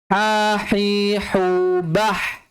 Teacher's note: ha itu makhrajnya di tengah tenggorokan.